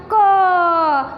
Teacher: क बोलोगे ना क, तो वो भी कंठ से ही आवाज़ आएगी, पर इसके साथ अ का उच्चारण भी होगा। ऐसे कोई भी आप, ये मैंने व्यंजन के वर्ण लिखे हैं सारे, कोई भी व्यंजन का वर्ण आप पढ़ोगे तो आपके हर एक में अ आ ऐसा उपयोग होगा।